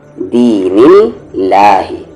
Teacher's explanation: اس اللہ کے لام سے پہلے والے حرف پر زیر ہے تو آواز پتلی ہے